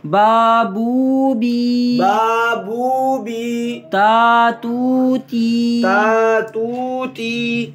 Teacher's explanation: ایک تو یہ ہے کہ ناک میں آواز نہ جائے، دوسرا یہ کہ ایک الف کی مقدار اس کو لمبا کریں گے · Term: مدہ